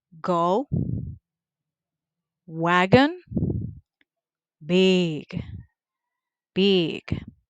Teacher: That one is voiced. The point of articulation, it is velar. The manner of articulation, it is stop or plosive.